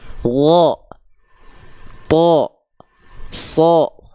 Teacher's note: kalau huruf tebal, dia ketika fathah bunyinya vokal o, teman-teman terdengarnya.